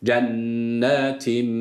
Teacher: bir Elif uzatıyoruz EA arası bir sesle